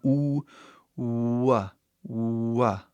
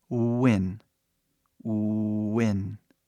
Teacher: praticamente ele é um U que abre para um a né mas é super rápido